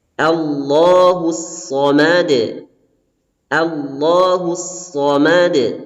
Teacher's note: huruf shad ini merupakan huruf isti'la, ya, yang bunyinya harus tebal, ya, berbeda dengan huruf sin.